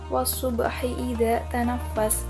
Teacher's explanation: terdapat hukum tajwid qalqalah sughra karena ada huruf qalqalah yang sukunnya itu sukun asli. Cara bacanya dipantulkan dengan kecil.